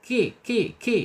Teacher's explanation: Musal kitab ya. Kap ki ya, kap secara makhraj ada di al-lisan, yaitu ujung lidah menyentuh langit-langit yang berdaging, ki gitu ya. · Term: kaf